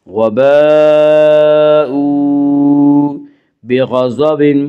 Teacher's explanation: قین کو پر پڑھیں گے، ضاد کو بھی پر پڑھیں گے، یہ دونوں حروف مستعلیہ میں سے ہیں۔ · وباء، واو مدہ وہ جو ساکن ہو اور اس سے پہلے پیش ہو، واو مدہ کو 1 الف کے برابر کھینچ کر پڑھیں گے